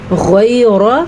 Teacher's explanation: غیر را کو پر پڑھنا ہے اور غین کو بھی پر پڑھنا ہے۔